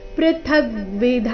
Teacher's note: ಥ ಮೇಲೆ ಆಘಾತ ಧ ಮಹಾಪ್ರಾಣ ದೀರ್ಘ ನಂತರ ವಿಸರ್ಗದ ಉಚ್ಚಾರಣೆಯನ್ನ ಹೇಳಬೇಕು